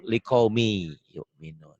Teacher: Bisa dikatakan idgham itu tulisan dan bacaan beda. Ditulisnya ada bunyi N-nya, dibacanya N-nya hilang, melebur.